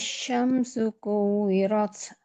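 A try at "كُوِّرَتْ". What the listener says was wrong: Kuwirat, lebih ditekan sedikit lagi. Kuwirat.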